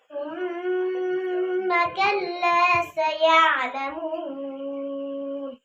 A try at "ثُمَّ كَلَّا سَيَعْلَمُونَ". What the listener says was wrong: ইয়া, এই ইয়া নিচের দিকে তো যায় কেন? বা এটা হবে না, এটা খেয়াল করবা, পরবর্তীতে ঠিক করবে এটা।